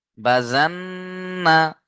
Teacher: নুনের উপরে তাশদিদ থাকার কারণে নুন তাশদিদ অজিব গুনা